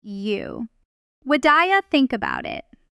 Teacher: The important word is think. So that's the one that gets the clear stress.